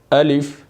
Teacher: الف بغیر جھٹکا دیے، بغیر کھینچے معروف ادا ہوگا، یعنی آپ اس کو جھٹکا دے کر نہیں پڑھ سکتے، آپ اس کو کھینچ بھی نہیں سکتے۔